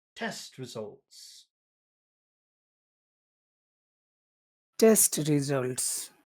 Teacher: that's got the long, short, long pattern that English likes